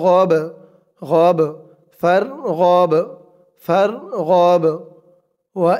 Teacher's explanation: এই বাটাও কলকলা হরফ ধাক্কা দিয়ে পড়তে হবে